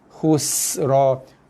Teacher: Tengok dia ada bunyi desiran. Sin tu bila baris mati dia ada bunyi desir.